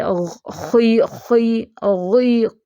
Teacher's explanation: ख, गैन और कौफ, इनको ज़्यादा एक्स्ट्रा मोटा नहीं ज़ेर के साथ करना है